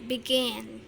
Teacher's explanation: penekanannya di suku kata kedua